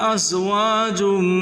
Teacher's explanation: ज़ा को सीटी से अदा करें, मीम मुशद्दद गुना करें, त्वा को पुर करके पढ़ें मोटा करके।